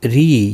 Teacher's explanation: یا مدہ ہے، ایک الف کی مقدار کے برابر کھینچ کر پڑھیں گے. روزیر کی وجہ سے باریک پڑھا جائے گا.